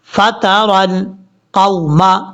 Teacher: مطلب اس کا یہ ہے کہ جس کو واو لین کہیں وہ واو جو ہے لمبا نہیں کیا جائے گا، شارٹ کٹ پڑھا جائے گا